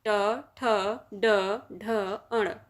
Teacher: और यह बोले जाते हैं मूर्धा से। यह मूर्धन्य वर्ण हैं।